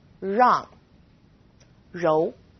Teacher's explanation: It's quite similar to the R sound in run, but the R is a little softer. So try moving your tongue more to the back of your mouth.